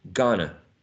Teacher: Okay, again, in gonna, right, and going to, we may see that the u was reduced to a schwa, right? We may see that the diphthong o was reduced to a monophthong.